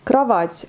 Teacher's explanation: le O n'est pas accentué, donc on le lit comme en A